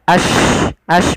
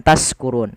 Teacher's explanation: Tafasyi itu apa? Yaitu suara shinnya dia ash bukan taskurun. Jangan diganti dengan sin. Hati-hati. Kemudian lafal run, ada bacaan mat arid disukun.